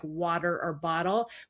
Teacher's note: the way we flap the T to make it more D-like in words like water or bottle